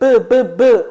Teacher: 입술이 부딪혀. 그렇지. 양순음이야. 양순음의 미음. 이렇게 바뀌는 현상이야.